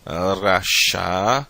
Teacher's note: começa com a letra Resh, com o som do R, fricativo, Kamatz, vogal A longa.